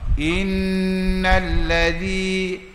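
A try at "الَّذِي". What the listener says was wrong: tambah allazi. Beza. Sebab apa beza? Sebab kita lidah kita ada beza zai dengan zal tu. Bunyi zai belaka dah. Itu zai. Makhraj dia di langit zai. Kalau zal cokeh pendek itu, makhraj dia depan gusi gigi zal.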